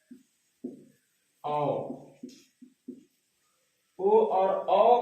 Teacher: कंठ और ओठ से होता है। कंठ और ओठ से होता है। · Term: कंठोष्ठ वर्ण